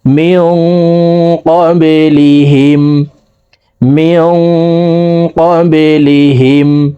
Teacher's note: এখানে এই নুন সাকিনকে নাকের ভিতরে লুকাইয়া গুন্নার সহিত পড়তে হবে। কবে এই বা কলকলার হরফ, তো নিচের দিকে ধাবিত করে ধাক্কা দিয়ে উচ্চারণ করব।